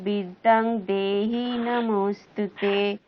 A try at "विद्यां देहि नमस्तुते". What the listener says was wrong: বিদ্যাং কোত্থেকে পেলেন? বিদ্যাং কোথেকে পেলেন? নমস্তুতে বিদ্যাম, বিদ্যাম।